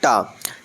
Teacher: टा जो है वह दंत नहीं होता है, दंत वर्ण नहीं होता है। कैसा होता है? मूर्धा कहते हैं या मूर्धन्य